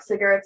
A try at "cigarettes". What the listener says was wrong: I think you just said it really fast. Cigarettes. Sound like secrets.